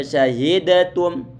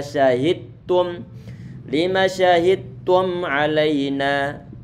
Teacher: Sedangkan ta sama dal itu mereka makhrajnya mereka sama, sehingga huruf dal dia perlu untuk didhamkan dalam huruf-huruf ta'nya sehingga menjadi satu huruf ta' yang bertasydid. Kalau sudah diidghamkan, dilebur ke dalam huruf ta', maka sifat qalqalah sudah nggak ada lagi. Sehingga kita nggak boleh membaca syahidatum, nggak boleh, tapi adalah syahidtum.